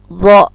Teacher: Makhrajnya adalah ujung lidah dengan ujung gigi yang di atas.